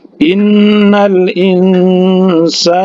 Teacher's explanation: Sa 2 harokat karena mad asli atau mad tabi'i alif